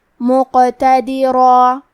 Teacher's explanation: حرف کا حکم لیتا ہے تفخیم میں اور ترقیق میں، لہذا ہمیں حرف الراء کو اور اس کے بعد مد الف کو دونوں کو بھاری آواز میں پڑھنا ہے